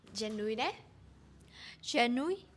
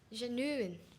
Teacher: It has 3 syllables. The stress is on the first syllable. And there's a hidden W right between the U and the I.